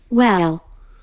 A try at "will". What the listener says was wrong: Will 이라고 발음, well 이렇게 들리는데, will 이라고 읽으면 되고요.